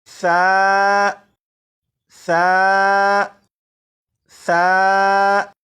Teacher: اب اس حرف کو پڑھنے کے لیے آپ صرف ایک بات پر توجہ دیجیے گا، وہ یہ کہ زبان کی نوک اوپر کے سامنے کے دانتوں سے لگانے کے بعد اس حرف کو پڑھے گا تو یہ حرف بالکل صحیح پڑھا جائے گا